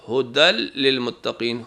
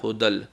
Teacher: اگر تنوین یا نون ساکن کے بعد لام آ جائے یا رے آ جائے تو آواز کو لام اور رے میں بدلنا ہے اور غنّہ نہیں کرنا